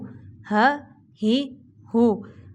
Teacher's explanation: اب یہ ہا جو ہے اس کو سینے سے نکالیں گے، حلق سے نہیں۔